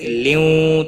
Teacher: تنوین کے بعد حروف یرملون کا واو آیا ہے، ادغام ہوگا با گنہ، گنہ کے ساتھ پڑھیں گے